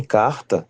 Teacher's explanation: o R em sílaba medial ou final simplesmente some e o traço de retroflexão passa para consoante oclusiva o velar ao lado como T ou D. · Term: retroflexão das oclusivas